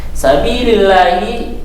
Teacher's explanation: Tarkik itu tipis ya, karena harokat lafaz Allah sebelumnya itu ada harokat kasr.